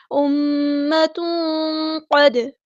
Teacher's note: دال ساکن پہ قلقلہ ہو رہا ہے